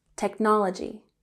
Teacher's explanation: Technology has emphasis on the second syllable